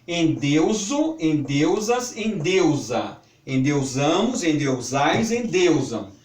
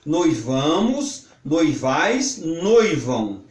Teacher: Tipos: endeusar e noivar. Conjugam-se mantendo o ditongo sem que o e ou o passem a timbre aberto. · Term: ditongos fechados